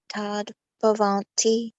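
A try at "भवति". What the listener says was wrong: Bhavati. No N, no N. Bhavati. Bhavati, Bhavan.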